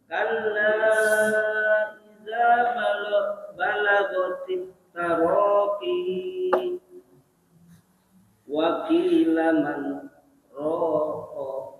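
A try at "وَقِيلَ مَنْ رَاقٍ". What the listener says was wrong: Yang ngerokok. Ini ngerokok. Panjangin. Karena mad al sukun nih. Kalau nggak dipanjangin persis kayak rokok. Ya, jadi harus panjang mad al sukun.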